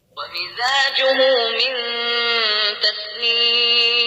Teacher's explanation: السين هنا في همس جريان نفس